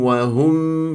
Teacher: الهاء والميم مرققه لا تسحب ضمه الهاء الى الميم